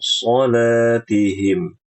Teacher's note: ikhfanya itu gunahnya tebal